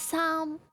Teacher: the first tone is high and steady, so it's Sam.